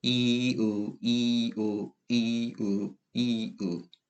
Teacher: 이를 하면 상대적으로 혀가 앞쪽으로 쏠렸다는 느낌. 을을 할 때는 혀가 뒤로 쫙 당겨진다는 느낌을 받을 겁니다. 그래서 이를 발음하다가 혀의 위치를 후설 쪽으로 쭉 밀어버리면 의의 발음이 완성이 되는 겁니다. · 혀만 앞으로 갔다, 뒤로 갔다, 앞으로 갔다, 뒤로 갔다 한다는 게 느껴지나요?